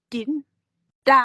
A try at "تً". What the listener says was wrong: tan, ouais, ouais, c'est ça, c'est en haut, ouais, c'est en haut, donc c'est pas en bas.